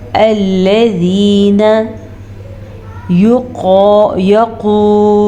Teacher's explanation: अल्लज़ीना नून ज़बरना, नून को लंबा नहीं करेंगे